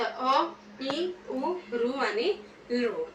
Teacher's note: ह्रस्व स्वर म्हणजे ज्या स्वराच्या उच्चारणासाठी म्हणजे प्रोनाउन्सिएशन जेव्हा आपण करतो अगदी एक मात्रे पुरताच वेळ घेतला तो.